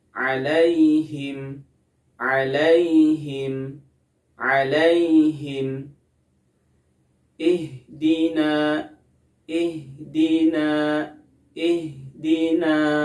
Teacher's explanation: huruf H makhrajnya sama dengan huruf hamzah, yaitu ada di pangkal tenggorokan atau yang disebut dengan aqsal halqi.